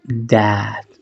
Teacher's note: Esa unión de la A más la E, que es una A corta. Como si sonriéramos